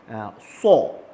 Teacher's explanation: Kalau sad kita kena tebalkan. Macam mana nak tebalkan makhraj bunyi huruf? Hanya perlu muncungkan sahaja kita punya bibir. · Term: makhraj huruf sad